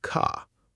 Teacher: The R sound is always pronounced, like in car or bird. In British English, that R is often silent, so car can sound more like ca.